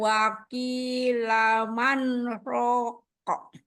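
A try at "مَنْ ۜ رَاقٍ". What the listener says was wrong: Kurang jeda itu. Belum saktah. Lagi.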